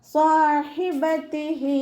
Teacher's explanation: ഹഇൻ്റെ കൂടെ യാ ഉസ്സഗീറ വന്നു, 2 കൗണ്ട് നീട്ടി കൊടുക്കുക · നാവിൻ്റെ ബാക്ക് നല്ലോണം മുകളിലേക്ക് ഉയർത്തി കൊടുക്കുക. ഹഇൻ്റെ മഖ്റജ് വസത്തുൽ ഹൽക്കാണ്, സൗണ്ടിനെ ക്ലിയർ ആക്കി കൊടുക്കുക.